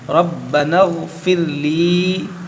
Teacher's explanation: नून को गैन से मिला देंगे